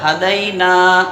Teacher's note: نہ ہا کھینچیں گے نہ دال، بلکہ نون کو ایک الف کے برابر کھینچیں گے